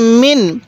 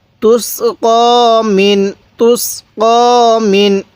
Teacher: আমরা অনেকেই এই নুন সাকিনগুলো পড়তে পারি না, অর্থাৎ আমরা নুন সাকিন দেখলেই গুনাহ করি। দেখুন এই নুন সাকিনের মধ্যে কিন্তু আমরা গুনাহ করব না, কারণ নুন সাকিনের পরে এই আইনটি হলো ইজহারের হরফ। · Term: স্পষ্ট করে পড়ব